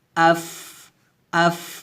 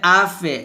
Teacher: হামজা গইন জের ইগ, হামজা গইন পেশ উগ, আগ ইগ উগ এভাবে, আগ ইগ উগ, তবে গইনটা এখানে কি হবে মোটো হবে। তারপর ফা কিন্তু হামসের হরফ, এখানে হামস করতে হবে